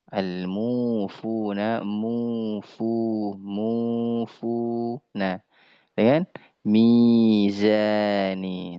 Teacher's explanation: Kadar pengucapan madut thabi'i ya atau mad asli yaitu panjangnya dua harakat